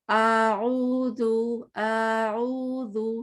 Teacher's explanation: وسط حلق سے نکالنا، آئین کو وسط حلق سے نکالنا ہے